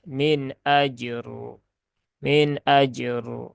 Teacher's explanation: karena rnya berharakat kasrah ya di dalam di sini kasrah tanwin Ya tapi kalau kondisi waqaf ya berarti jadi sukun maka rnya terbaca tebal · karena kan dia dalam kondisi wakaf, maka roknya dibaca dengan tafkhim ya, atau tebal. Maka bukan tapi er, Nah, pangkalnya dinaikkan.